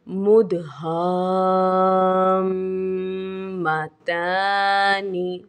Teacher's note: یہاں پر الف سے پہلے زبر ہے اور میم پر سکون اصلی ہے، یہاں پر مد لازم کا قاعدہ ہے اور مد لازم کو 3 الف کی مقدار تک کھینچ کر پڑھا جائے گا۔